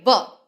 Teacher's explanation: તો દંતૌષ્ઠ્ય કે જ્યાં દાંત અને નીચલો હોઠ, જેમ આપણે બોલીએ વ, તો વ બોલતા ઉપલો દાંત અને નીચલો હોઠ બંનેનો સ્પર્શ એકબીજાને થાય છે, માટે વ એ કયા પ્રકારનો વ્યંજન છે?